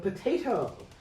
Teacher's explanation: aspiration does also occur in stress syllables such as in the word potato where the um the the syllable is a primary stress.